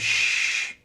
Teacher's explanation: huruf shin itu sifat khususnya adalah tafashi, yang mana saat disebutkan akan menyebar suaranya shh, gitu ya, shh.